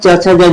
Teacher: तालव्य में यानी तालु से आते हैं च छ ज झ